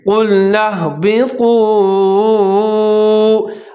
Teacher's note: قاف کو موٹا کر کے پڑھنا ہے، طا کو ظاہر کر کے پڑھنا ہے، اور ہا کو موٹا کر کے پڑھنا ہے